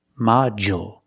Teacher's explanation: we see the D makes the J sound, like juice and jump. Module. DU in the middle of the word usually makes the J sound.